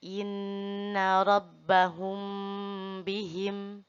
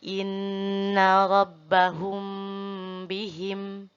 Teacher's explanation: ini huruf mim mati bertemu dengan huruf ba. Ditahan selama 3 harokat. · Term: ikhfa syafawi